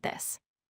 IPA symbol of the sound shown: ð